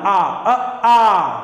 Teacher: विवृत का मतलब था मुंह का खुला होना, आ अ आ, पूरा होंठ खुल गया आ, अब इतना होंठ कहीं नहीं खुलता